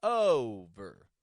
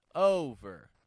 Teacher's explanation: the first syllable of the word over over is going to be stressed here it's going to raise in the tone